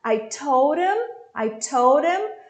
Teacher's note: Cortei esse H do him.